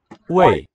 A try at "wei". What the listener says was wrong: Wei. It's an A, not the I of number two. Wei.